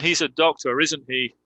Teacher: That's a falling intonation. So it's not a real question. I'm just confirming.